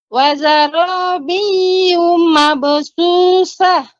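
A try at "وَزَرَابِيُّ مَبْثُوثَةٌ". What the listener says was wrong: Yu-nya tidak dibaca panjang Ibu. Jadi ketika baca yu langsung ma. Wazarabiyu mabthuthah.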